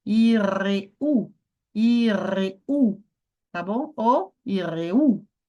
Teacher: Subir no U, gente, subir no U. Tônica tá onde? Tá no final.